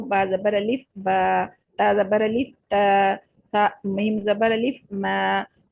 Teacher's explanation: 2 हरकत यानी डबल आप खींचेंगे।